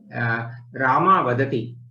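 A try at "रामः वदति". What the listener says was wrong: Make the Visarga very prominent when you say. Please say it again. Ramaha Vadati. Ramaha. Ha should be heard.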